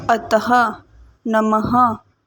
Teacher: विसर्ग की ध्वनि का प्रयोग स्वर के बाद किया जाता है, इसका उच्चारण ह की तरह किया जाता है।